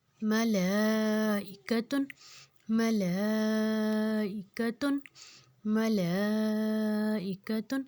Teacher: لام کے اوپر مد آ گئی، آگے حمزہ، 4 حرکت لفظ کو ہم کھینچیں گے، لمبا کریں گے